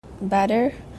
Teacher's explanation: There is no presence of glottal stop. Instead, flapping takes over in the American accent. The t sound is replaced with the. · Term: intervocalic flapping